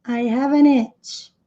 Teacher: Como esse E não é pronunciado, a palavra termina com som de V, have. E esse V emenda com o N.